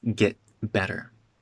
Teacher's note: Another glottal stop for get.